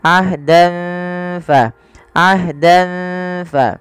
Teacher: samarkan tanwinnya kepada huruf fa karena ia bacaan ikhfa yang dimana ada fathatain bertemu dengan huruf fa.